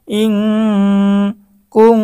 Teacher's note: বিআসমাই হাউলাই, হামজা নুন জের ইং, কাফ নুন পেশ কুং, ইং এখানে ইকফার গুন্না, নুন সাকিনের পরে ইকফার 15 হরফের একটি হচ্ছে কাফ, তো নুন সাকিনের পরে ইকফার হরফ কাফ এসেছে, গুন্না সহ স্পষ্ট পড়তে হবে।